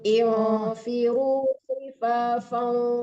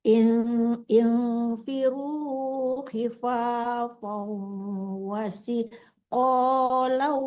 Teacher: Infiru khifafan itu ditarik ke hidung ya. Setiap tanwin ketemu waw walaupun wawnya tidak ada tasdidnya, tarik ke hidung itu dengung. Jangan fau, jangan sekedar tasdid tapi dengung itu ya.